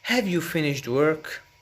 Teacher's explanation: So the emphasis is on work and have is weak.